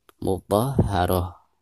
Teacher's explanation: Adapun cara membaca ta marbutah di sini, apabila diwakafkan maka suara ta marbutah tersebut berubah menjadi ha sukun